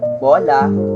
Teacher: ang o ay nagbibigay ng mas malalim at malapad na tunog